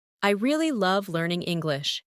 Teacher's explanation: Emphasize really and love.